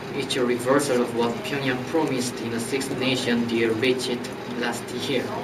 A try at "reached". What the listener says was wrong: Do not give me the extra sound, not reached, reached.